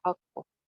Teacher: यहाँ पे हक को दो काफ सुनाई दे रहे होंगे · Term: कलकला